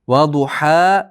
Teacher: Va duha, bu du dommalik, ha ikki harakat miqdori cho'ziladi. Ha, bu ha ikki farqlansin, ajrasin.